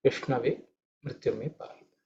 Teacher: this ish is cerebral isha. So if the tongue is pointed upwards, the tip of the tongue should be pointing towards the roof of the mouth.